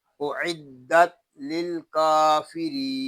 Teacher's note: دال مشدد ہے اس کو جماؤ کے ساتھ ادا کریں گے ، آگے لام ساکن ہے اس کو سکون کے ساتھ ادا